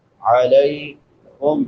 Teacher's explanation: یتلون علیکم، علیکم، لام کے بعد یا لین ہے، یا ساکن ما قبل فتحہ یعنی زبر ہے، اس کو نرمی سے پڑھیں گے